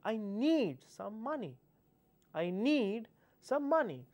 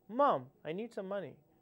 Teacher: you just put some pressure on need